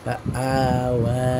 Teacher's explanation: ওয়াও চিকন উচ্চারণ হবে মোটা উচ্চারণ হবে না বারিক উচ্চারণ হবে পুর উচ্চারণ হবে কিন্তু আর নিজের সিফাত হলো সে পুর কিন্তু